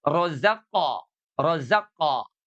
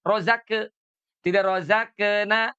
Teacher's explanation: Karena huruf qaf itu adalah huruf isti'la, maka qalqalahnya itu menebal, gitu ya. Kalau qalqalahnya menebal itu cenderung kepada fathah.